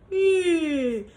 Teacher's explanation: The lips are rounded a little bit and you get a little bit of that forward tongue. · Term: mixed vowels